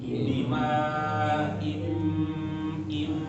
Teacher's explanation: Mim sukun ketemu ba harus ditahan.